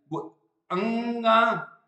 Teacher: ਇਹਦੀ ਆਵਾਜ਼ ਨੱਕ ਤੇ ਗਲੇ ਤੋਂ ਪੈਦਾ ਹੁੰਦੀ ਹੈ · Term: ਅੰਗਿਆ